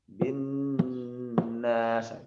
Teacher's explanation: Nah, karena nun ini tidak bisa ditekan, jadi diharapkan sedikit dipanjangkan dengungnya. Nah, jadi yang ditekan adalah dengungnya. · Jadi penyebutan nun di sini delay ya, sekitar 3 harokat. Ya, 3 harokat, 3 ketukan.